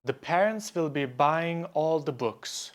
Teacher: there are 10 syllables in this sentence, but there are only three beats